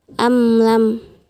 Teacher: mim sukun bertemu dengan huruf lam dibaca jelas dan dihukumi izhar syafawi.